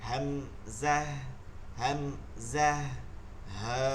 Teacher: এক নম্বর মাখরাজ হলকের শুরু হইতে হামজাহা